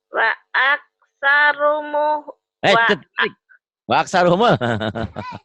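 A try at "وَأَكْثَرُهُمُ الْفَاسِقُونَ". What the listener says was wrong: Wa aksaruhum. Wa aksaruhum. Terbalik. Wa aksaruhumul. Muhul. Humul.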